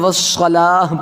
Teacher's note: والصلاۃ، اگر یہاں پر سٹاپ کریں گے تو والصلاۃ پڑھیں گے، اس گول تا کو وقف کی صورت میں ہاں ساکنہ کے ساتھ بدل کر پڑھیں گے۔